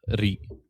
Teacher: your tongue is supposed to hover in the middle of your mouth, so it's almost like an LR